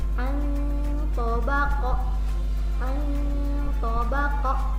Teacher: Kotak kedua, ada nun mati ketemu to. Bacanya bukan anto tapi nunnya disamarkan. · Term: ikhfa